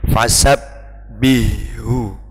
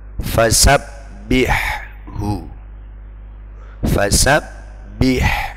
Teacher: Jadi sifat haknya harus terucap dengan jelas meskipun dia sukun dan berhadapan dengan huruf yang makhrajnya sangat dekat, yakni ha. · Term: idhar